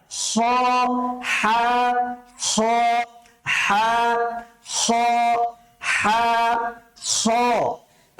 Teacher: সেই কণ্ঠনালীতেই ব্যবহার করতে হবে তবে কণ্ঠনালীর শেষাংশের দিকে যেতে হবে কণ্ঠনালীর শেষের অংশ থেকে আপনি উচ্চারণ করবেন